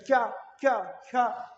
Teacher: च वर्ग का उच्चारण तालु से होता है